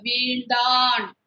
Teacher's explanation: அப்போ நம்ம நாக்க நல்லா மடக்கிக்குங்க. வீழ்ந்தான் அப்படின்னு நம்ம நாக்க மடக்கி வச்சு சொல்லலாம்.